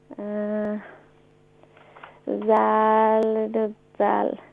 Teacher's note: From the top of the tongue and the inner edge of the upper teeth. Upper front teeth.